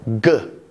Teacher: The sound g is produced further back in our mouth than p. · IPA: ɡ